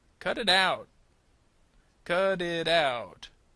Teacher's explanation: So notice that T is going to sound more like a D sound in American English.